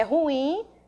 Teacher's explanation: Sílaba tônica da palavra é o in, é uma oxítona